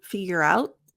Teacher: rout figure out notice the T it's not figure out T my tongue goes into the T position figure out but there's no air